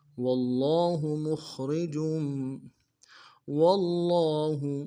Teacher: واو کو لام کے ساتھ ملانا ہے، لام کے اوپر تشدید زور دیں گے، اگر لام کے اوپر کھڑا زبر ہے ایک مقدار میں کھینچیں گے، ہا کو نون سے ادا کریں گے.